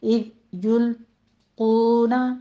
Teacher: اذ یلقون میں ذال کو نرمی سے پڑھتے ہوئے اذو نہیں کہنا، سٹاپ کیجئے اس کو. اذ یلقون، قونا قاف پر پڑھتے ہوئے آگے واو مدہ ادا کیجئے، ہونٹوں کو پراپر گول کر لیا کریں.